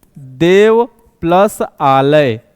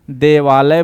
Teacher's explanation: यहां पर देख लेते हैं दोस्तों, ये होता है देव प्लस आलय। देव में दोस्तों क्या है? अ है, यहां आ है, अ और आ मिलते हैं तो आ बन जाते हैं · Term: दीर्घ संधि